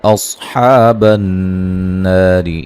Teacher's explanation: صوت کو موٹا ادا کریں گے، حمزہ کو تحقیق سے، تحقیق کا مطلب واضح طور پہ پڑھنا ہے، نرم نہیں پڑھنا